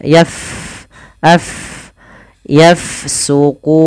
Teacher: huruf Fa dia sukun maka kita alirkan nafasnya